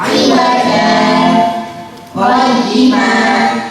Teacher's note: Aywaja qayyimah bacaan sahkan artinya berhenti sejenak sekedar satu alif tanpa bernafas